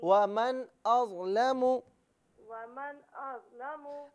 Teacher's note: नून साकिन की आवाज़ नहीं होगी बल्कि मीम की आवाज़ होगी और गुन्ना भी किया जाएगा